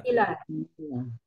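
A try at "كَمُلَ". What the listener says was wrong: Kamula. Kamula, Bu. mim dengan domah itu bacanya kamula.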